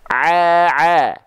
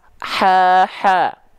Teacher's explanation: melafalkan huruf Ain dan ha kecil itu sama persis cuman bedanya Ain enggak pakai nafas H kecil pakai nafas